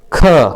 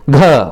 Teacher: महाप्राण में अधिक हवा निकले और साथ ही साथ बताया है कि जिन व्यंजनों के उच्चारण में हकार, ह की जो ध्वनि है विशेष रूप में सुनाई दे, वे सभी महाप्राण होते हैं।